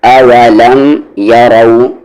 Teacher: را کو ہیوی کریں گے، اس کی ساؤنڈ اوپر کی طرف ہے